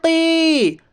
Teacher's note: یا ساکن سے پہلے زیر ہے، اس لیے یا مدہ ہوگا، یا مدہ کو ایک الف کے برابر کھینچ کر پڑھیے